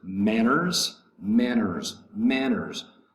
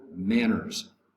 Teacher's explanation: Manners has 2 syllables. The first syllable is going to be accented.